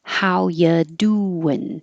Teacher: how you doing so we get rid of the r completely U changes to ya whenever possible to make that more casual